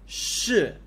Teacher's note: going down, fourth tone.